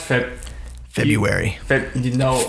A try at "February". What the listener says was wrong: You don't do the R? Oh, I do. I'd say February. Because is there an R after the B? Is it February or February?